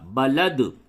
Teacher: حالت وقف میں دال ساکن یہاں پہ قلقلہ